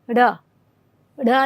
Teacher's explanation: जब आप उच्चारण करते हैं तो जीभ जो है मुड़ करके श्वास वायु को बाहर की तरफ फेंकती है। जैसे र, देखिए जीभ जो है आपकी वो थोड़ी सी मुड़ करके बाहर आती है, तो इसीलिए इसे उच्छिप्त कहते हैं क्योंकि जीभ थोड़ी सी मुड़ती है। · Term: उच्छिप्त व्यंजन